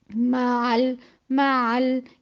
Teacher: لام کی جو مخرج ہے وہ زبان اوپر جا کے تھوڑی دیر ٹکے گی. ٹکنے کی وجہ سے یہ جو لام کی چلتی ہوئی آواز محسوس ہو رہی ہے وہ آئے گی.